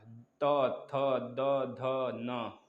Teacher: यही तो होता है सबके साथ, बताइए सभी लोग। दंत, दंत में आप देख रहे हैं त, दांत के पास जीभ आ रहा है · दंत, दंत में आप देख रहे हैं त, दांत के पास जीभ आ रहा है, त, थ, द, ध, न आ रहा है ना, तो इस तरह हो जाएगा या दंत व्यंजन।